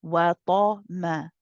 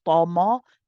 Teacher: the ta is heavy. But then you switch back to a light meme.